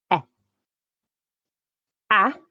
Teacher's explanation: is a low front vowel and you need to make sure your tongue is low in the mouth to make it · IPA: /æ/